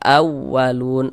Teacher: Ini kita baca awwalun agak dinaikkan sedikit ee intonasi suara kita ditekan. Nah, jadi kalau ada huruf wau bertasydid yang dia itu bukan idgham bighunah gitu kan.